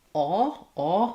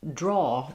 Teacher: In British English, they have this vowel, aw, which is further back. It's also rounded, but it's almost more in the throat.